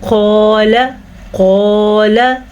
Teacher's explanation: काफ के बाद तो अलिफ है और काफ पे ज़बर भी है। अलिफ से पहले किसी भी हर्फ पे ज़बर हो तो वो अलिफ मद्दा कहलाता है। हमने इसीलिए इसको खींच के पढ़ा।